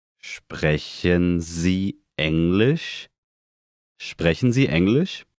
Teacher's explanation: Note again the rising intonation.